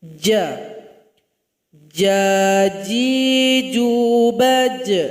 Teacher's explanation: Sifatnya juga syiddah. Suara tertahan juga ketika membacanya.